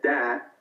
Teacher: So instead of the th, he said dat, and he doesn't have a final th